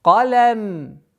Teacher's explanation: Лям мягкая, который идет после твердого звука каф.